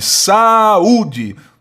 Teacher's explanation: esse U não é átono, esse U é tônico. Ele forma hiato com a vogal A, mas ele não é átono.